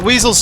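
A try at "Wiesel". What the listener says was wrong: I think technically they would be Weisels, since the W is pronounced like a V in German.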